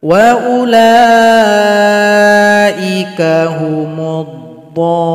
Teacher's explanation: Kita lihat ayat 90 muncul lagi tanda bendera jumpa tasdid, berarti dhad panjangkan dulu 6 ketukan.